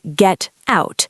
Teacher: In London, if I'm being very clear, I might say get out. I keep the T quite sharp. Or if I'm speaking casually, I might use a glottal stop.